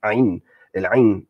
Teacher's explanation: that ah sound, that is pharyngeal sound, and you've got the sound that the sort of voiceless version, ha, like the letter ha in Arabic.